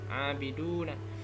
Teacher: Ada mat tabi'i, dibaca panjang 2 harokat